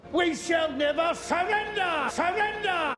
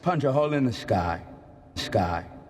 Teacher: So was pretty far away, which gives it a lower pitched S than higher pitched one.